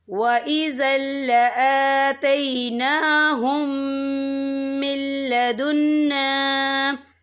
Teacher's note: یہاں خالی الف سے پہلے زبر ہے اور اس پر چھوٹی سی مد بھی ہے، تو ہم اسے 3 یا 4 حرکت کے برابر کھینچ کے پڑھیں گے